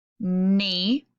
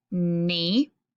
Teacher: I don't say knee. I don't hear the K sound at the beginning. I see KN and I know that it makes a N sound.